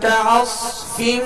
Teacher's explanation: صاد کو پر اور سیٹی کی آواز میں پڑھیں گے